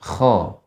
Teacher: Kha ini banyak garukannya.